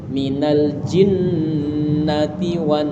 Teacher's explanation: N agak ditahan dua harakat. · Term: penekanan huruf nun